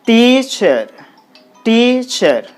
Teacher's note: we have to apply higher force on the syllable t lower force on the syllable sure